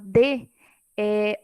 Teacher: quando a gente fala D, a língua bate no dente. Então, é outro exemplo também de obstáculo que o ar encontra.